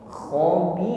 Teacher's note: Ditutup dengan huruf ra, maka ra-nya di sini sifatnya takrir dan tarqiq, bergetar dan getarannya ringan. Bukan khabir, bukan ditebalkan ya, karena sebelumnya ada ya sukun dan harokat kasrah.